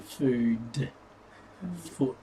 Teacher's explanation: Taking foot and food, for example, the Vietnamese don't have short or long vowel sounds. So that oo sound you get with foot would be the same as the oo sound you'd get with food.